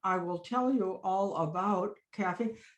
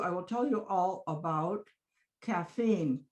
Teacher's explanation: about is at low pitch but you still have the length